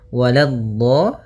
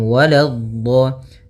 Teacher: la-nya jangan sampai tebal, jangan waladdo, tapi la-nya tipis